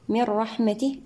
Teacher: النون مع الراء هنا إدغام بغير غنة كاملة